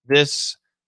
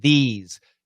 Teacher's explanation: this is a short i vowel and this is a long e vowel and this has an s sound and these has a z sound